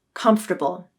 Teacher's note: the first syllable Kumpf has the stress and the next two syllables are unstressed